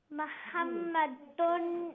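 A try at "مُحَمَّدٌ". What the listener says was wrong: No, mim has a dhamma, so it's mu, not ma, mu.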